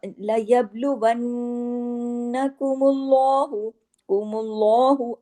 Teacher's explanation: اللہ کے نام میں لام کو ہیوی کر کے پڑھا جاتا ہے ، کیونکہ لام کنڈیشنل ہیوی ہے، ویسے ہیوی نہیں ہے۔ बिशैइम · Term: لام جلالہ